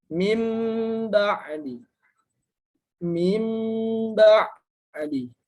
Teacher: diubah menjadi suara mim disertai dengan gunnah atau dengung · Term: iqlab